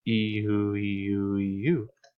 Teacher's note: With Oo, they'll form a round shape like a circle. With E, they'll probably be flat, at least mostly flat. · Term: rounding